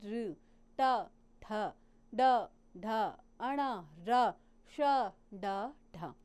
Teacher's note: जीवा जब मूर्धा को हमारी टच करती है उसको हम मूर्धन्य ध्वनियाँ कहते हैं।